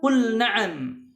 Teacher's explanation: huruf lam sukun dibaca jelas saat bertemu dengan huruf nun berharakat